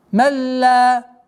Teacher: Здесь у нас ассимиляция без назализации.